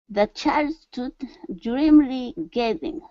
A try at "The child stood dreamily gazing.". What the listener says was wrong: Okay, so instead of stood, open up your mouth there. Stood. The child stood dreamily gazing.